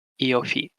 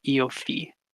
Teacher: The F in Iofi, if you're pronouncing it like Japanese, it's going to be bilabial.